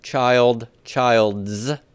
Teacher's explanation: there's no apostrophe in speech, is there? It's just adding really a Z sound.